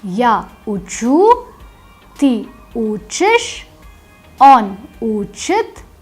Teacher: In the ya form the stress is on the ending, and in the remaining forms the stress moves to the stem. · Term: stress shifts